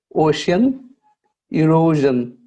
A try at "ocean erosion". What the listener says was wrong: Yeah, you can make your O bigger. So ocean erosion, more O.